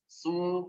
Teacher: Beda kalau sin nyengir dulu sedikit. Su kalau sod langsung monyong. Su tebel. Panjangkan 2 harokat.